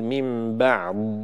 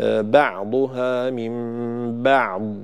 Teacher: كذلك الضاد لا يجوز قلقلتها، لا يصح قلقلة الضاد لدى الوقف عليها، فلا أقول من بعض ولا أقول من بعض همس، بعض همس لا يصح، وإنما أعطيها صفة الاستطالة وأنهي صوت الضاد بدون قلقلة ولا همس، فأقول بعضها من بعض بهذا الشكل.